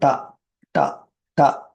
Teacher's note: இது சாதாரண ட ட ட பாருங்க காத்தெல்லாம் வெளியில வரல ஹா ஹா சவுண்டு இதுக்கெல்லாம் வராது இந்த ரெண்டுக்கும் அந்த ஹா சவுண்டு வராது சாதாரணமா இது பாருங்க ட இது · பாருங்க, காத்தெல்லாம் வெளியில் வரல. ஹ ஹ ஹ சவுண்டு இதுக்கெல்லாம் வராது.